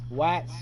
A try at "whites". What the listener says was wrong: No, whites. A little bit a little bit of H in there.